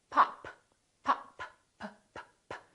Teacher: this is a stop because I'm stopping the airflow